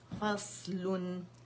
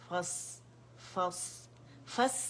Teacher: غلبن غلبن فصلن فص فص فص بولیں گے تو باریک ہو جائے گا, زبان کی جڑ اٹھائیں, اطباق ہے اس میں